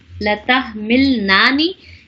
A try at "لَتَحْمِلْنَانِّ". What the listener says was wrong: نانی نہ کہے نان نے.